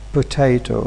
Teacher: the first vowel is a schwa and placed between two voiceless sounds, p and t. Therefore, it will be devoiced, potato.